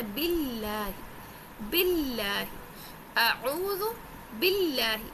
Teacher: اللہ کے لام سے پہلے با کے نیچے زیر ہے، اللہ کے لام کو باریک کرنا ہے، اور اللہ کے لام کے اوپر نا تشدید ہے، کھڑا زبر ہے، اس کو ایک الف کے برابر کھینچ کے سختی کے ساتھ پڑھنا ہے، باللہ، باللہ، اعوذ باللہ۔